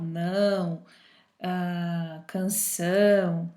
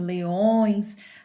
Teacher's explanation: a gente vai perceber que há uma leve vibração aí no nariz, tá? Por isso que quando a gente tá resfriado, o nariz entupido, enfim, o som sai um pouco estranho, ok? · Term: som nasal